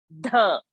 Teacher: while saying dh, the tongue has to touch the teeth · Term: dental